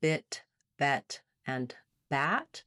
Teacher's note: Our like in bet, is right in the middle. The front vowels basically have more and more opening with the front of the tongue going down. So between bit, bet, and bat, the tip of my tongue is getting more open.